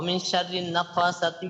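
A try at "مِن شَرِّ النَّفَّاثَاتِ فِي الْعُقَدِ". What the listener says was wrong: মিন মিন গুণা করে না কেন? মিন একটা জায়গা তো গুণা করে না, এগুলো তো ইকফা।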